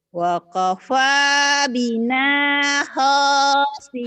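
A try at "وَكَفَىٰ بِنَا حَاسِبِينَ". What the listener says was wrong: ha, bukan ho. Ha.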